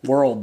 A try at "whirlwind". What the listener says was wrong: There is no D. Whirl. Whirlwind.